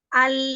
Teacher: ya, jadi nanti pada saat pengucapan itu antara tepi lidah itu artinya tidak dengan ujung lidah ya. Antara tepi lidah secara bersamaan akan naik ke atas. Nah, dia itu seluas 8 gigi seri atas lebar lidahnya. 2 gigi seri depan, 2 gigi seri samping, 2 gigi taring sama 2 geraham yang pertama. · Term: lam